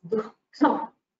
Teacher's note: So how it is pronounced is it has a peculiar pronunciation because it is not pronounced as a full visarga. Its duration is shortened. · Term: jihva muliya